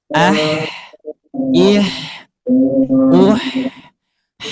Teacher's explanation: huruf H tidak menempel, tapi memberikan celah. Ketika diucapkan, maka otomatis katup epiglotisnya dengan dinding tenggorokan otomatis ada celah.